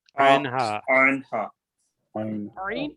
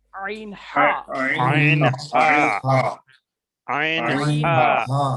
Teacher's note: ये जो अल्फाज है वो हलक के बीच वाले हलक में से, यानी दरमियानी हलक में से ये अल्फाज निकल रहा है